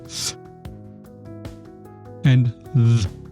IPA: θ and ð